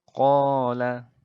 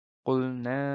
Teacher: mad asli atau mad tabi'i ini itu membacanya adalah dengan cara dipanjangkan sepanjang 2 harokat. 2 harokat itu ibaratkan nyanyi itu 2 ketukan seperti itu.